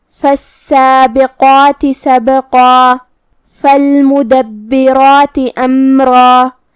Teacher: کلمت فالمدبرات میں یہاں با پہ تشدید ہے تو 2 حرف کے برابر ہم حرف البا کو پڑھیں گے، جو کہ تشدید زیر کا ہے تو اس کا دھیان رہے۔ را کی حرکت ہے زبر تو ہمیں را کو بھاری آواز میں پڑھنا ہے، اور جو کہ اس کے بعد مد الف ہے تو ہم یہ دونوں حرف کو بھاری آواز میں ادا کریں گے۔ · اگر ہم یہ آیت کو اگلی آیت کے ساتھ ملا کے پڑھے تو جو کہ فا حروف الاخفاء میں سے ہے تو ہمیں تنوین کو چھپاتے ہوئے غنہ کے ساتھ یہ حکم کو ادا کرنا ہے